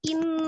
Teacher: In, bukan in, tapi in langsung ya. I-nya tidak dipanjangkan, langsung ditasdidkan ke nunnya, nunnya yang ditahan